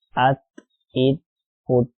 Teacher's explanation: Hamza ta zabar at. Ta is not from the letters of qalqalah, so there should be no movement while pronouncing it.